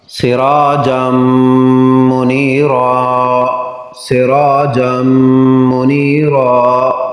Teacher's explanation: نون تنوین کے بعد میم حروف یرملون ہے تو ادغام غنہ کے ساتھ ہوگا